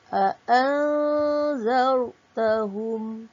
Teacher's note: Nun mati bertemu zal, hukumnya pun ifa hakiki. Okey, dibaca dengan dengung.